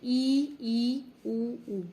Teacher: संवृत स्वर वो होते हैं जिनमें हमारा मुंह इन स्वरों को बोलते समय बिल्कुल भी नहीं खुलता, मुख द्वार लगभग बंद रहता है